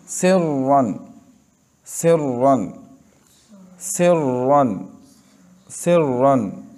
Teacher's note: रा को पुर पढ़ना है, इसलिए कि उसके ऊपर रा ज़बर है